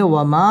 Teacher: ওয়াও ঠোঁট গোল করে উচ্চারণ করতে হবে